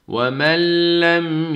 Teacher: yine nunu lama kattık. Sadece şeddeli bir harf miktarı kadar tutup okuyoruz.